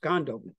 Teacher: Gandobum is preploded because although this nasal here would turn on nasalization, the D blocks nasalization from going on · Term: nasal harmony